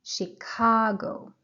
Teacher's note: The stress is on the second syllable. به stress به بخشی که stress داره توجه کنید. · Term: stressed syllable